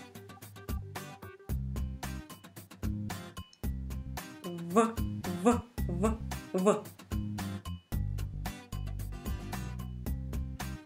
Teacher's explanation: when it is V, your upper teeth make contact with your lower lip. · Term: upper teeth and lower lip